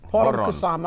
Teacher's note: we roll R, so it's poron